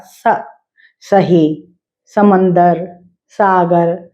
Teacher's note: स बहुत सीधा सा होता है, स बोलते हैं दांत के साथ